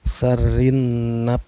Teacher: Cara bacanya alif lamnya tidak dibaca melainkan memasukkan dari huruf ro ke huruf nun ya. Dan ditekan sedikit karena ada tasdid. Sarin. Nah, nunnya juga ini dihukumi gunnah ya atau dengung karena nun yang bertasdid. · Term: alif lam syamsiyah